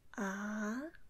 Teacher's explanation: And the second tone is 3 to 5.